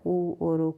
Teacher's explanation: होठों से जो है उ और उ का उच्चारण होता है